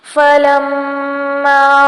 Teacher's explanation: فلما میم مشدد ہے اس لیے یہاں پر غنہ کریں گے اور مد اصلی بالالف ہو رہی ہے۔